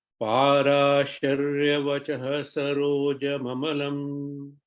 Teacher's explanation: There is no vachaha. That visarga vachaha will become vachas saroja. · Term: visarga sakara